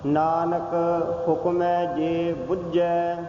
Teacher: ਬੁੱਝੈ ਕਸ ਕੇ ਦੱਬ ਕੇ ਬੋਲਣਾ ਹੈ, ਬੁਝਾ ਨਹੀਂ ਕਹਿਣਾ ਹੈ